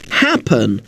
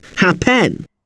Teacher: if you listen carefully, you'll notice that the stress is on the first part of the word